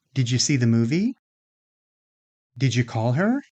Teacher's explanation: Now, when final d is followed by initial y, those two sounds can combine to produce the sound j, the sound you hear at the beginning of words like job or June. So, did you can become didja.